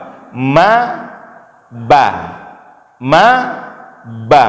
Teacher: Sama-sama keluar dari dua bibir. Ya, kita buka tutup bibir, itu keluar mim dan ba